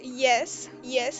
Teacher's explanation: if I say yes, yes in a normal level tone, then this is just yes